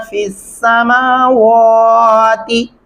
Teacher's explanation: जो अक्सर लोग मेरे पास ऑनलाइन पढ़ते हैं या उसके अलावा मेरे सामने बच्चे पढ़ रहे होते हैं या ओल्ड एज के जो लोग होते हैं, वो अक्सर इस लफ्ज़ को ऐसे दोहराते हैं फिस समावाती, ये गलत होगा। मीम को लंबा करना है, खड़ी ज़बर है